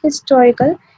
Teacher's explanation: अब जो word है historical, इसमें h की sound है in the very beginning, but बहुत कम sound है h की